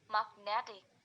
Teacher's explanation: Magnet plus ik, magnetic. The stress move from the mag to net, magnetic.